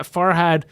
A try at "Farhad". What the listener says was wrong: Yeah, you got to say Farhad. Yeah, you're going had.